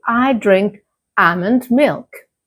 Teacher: With almond, the L is silent or very, very light.